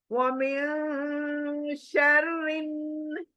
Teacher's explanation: मैं नून बिल्कुल नहीं पढ़ रही हूँ, only sound, sound is created नाक के बासे के अंदर , وَمِن شَرٍ، شر رو موٹی ہے، شر رن، نون شدہ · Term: इक्फा